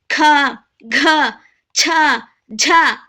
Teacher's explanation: ಹೆಚ್ಚು ಉಸಿರು ತಗೊಂಡು ಉಚ್ಚಾರಣೆ ಮಾಡುವಂತ ಅಕ್ಷರಗಳನ್ನ ನಾವು ಮಹಾಪ್ರಾಣ ಅಂತ ಕರೀತೀವಿ